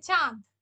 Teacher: এখানে তো আমাদের চন্দ্রবিন্দুটা আছে, নাকে সুরে আমরা উচ্চারণ করছি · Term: অনুনাসিক